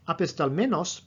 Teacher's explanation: the accent never goes past the men syllable. It's always on the men syllable.